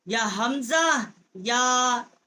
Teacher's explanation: حمزہ جو ہے یہ حروف حلقی ہے، اقصائے حلق جو ہے وہاں سے اس کا مخرج ہے